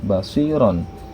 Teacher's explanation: Contoh dalam bentuk kata misalnya basiron dengan harokat fathatain pada huruf ro ya, itu dibacanya seperti nun mati, yaitu basiron, seperti ada nun setelah huruf ro, seperti ada huruf nun sukun setelah huruf ro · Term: tanwin